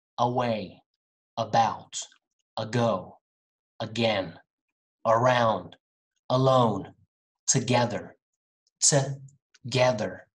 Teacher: The beginning of all of these words start with the schwa, sound.